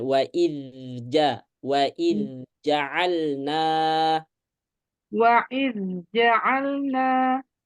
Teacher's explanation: Alirkan zal, nggak usah ditekan, biasa. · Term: izhar